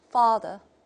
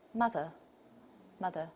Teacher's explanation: the first one is a back vowel, father. And the second one is a central vowel.